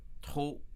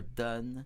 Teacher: trop being more closed, your donne being a little bit more open